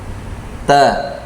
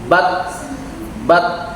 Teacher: makhrojnya ya ujung lidah ini ujung lidah dengan ini nih pangkal gigi seri atas jadi seperti ini t satu makhroj dengan dal dan th ya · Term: ta sukun